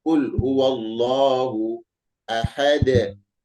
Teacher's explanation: Dal huruf qalqalah berada di akhir ayat, di akhir kalimat, maka dibaca qalqalah kubra. Ya, harus terdengar qalqalah kubranya.